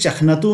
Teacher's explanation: बीच में ख में इस न के कारण हल्का सा नासिक्यत्व आ जाएगा